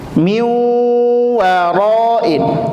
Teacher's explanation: Nun sukun ketemu huruf wau, maka leburkan ke huruf wau.